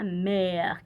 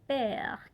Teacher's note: E, no es I, es E media. Y vamos a abrir un poco más la boca. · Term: E abierta